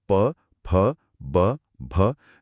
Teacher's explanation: आवाज पूरी तरह से हमारे होठों पर आकर बनती है। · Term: प वर्ग